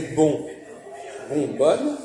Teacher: vous voyez bien que le on a disparu dans bonne. C'est-à-dire qu'on a coupé.